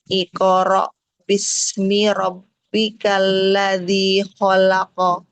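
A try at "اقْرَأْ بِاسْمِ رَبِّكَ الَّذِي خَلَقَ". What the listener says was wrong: Tebalkan ko-nya. Iqo. Angkat pangkal lidah supaya tebal. Iqoro.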